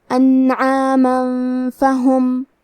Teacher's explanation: آخری میں میم پہ تنوین زبر ہے، پھر حرف الفا آتا ہے کلمت فہم۔ فا حروف الاخفاء میں سے ہے، تو ہم یہ حکم کو غنہ کے ساتھ ادا کریں گے